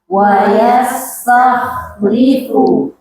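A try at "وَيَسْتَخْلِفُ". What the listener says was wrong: Tebalkan khonya, jangan yang dikurangi sifatnya, karakternya. Wa yastakhlifu. Sinnya tipiskan, jangan ditambah sifat jadi tebal.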